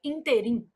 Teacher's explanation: a palavra ínterim apresenta erro de prosódia quando pronunciada como oxítona, que aí a pronúncia seria interim